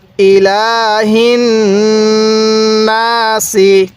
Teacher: গুন্নাটা করতে হবে নাকের বাঁশি দ্বারা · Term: গুন্নাহ